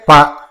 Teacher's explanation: both the lips touch and the reverberation is from the front of the mouth. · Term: labial